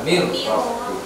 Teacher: Tulisannya min rabbi, bacanya mir rabbi. Nunnya hilang sudah, langsung masuk ke huruf ro.